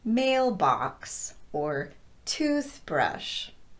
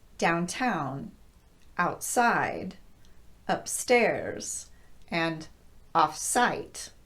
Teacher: compound words that are stressed on the second word instead of the first. These include words like downtown, outside, upstairs, and offsite.